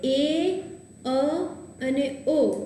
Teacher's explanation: પણ જ્યારે એ, અ અને ઓ એનું ઉચ્ચારણ કરો છો ત્યારે જીભ તાળવાથી થોડીક દૂર મધ્યમાં રહે છે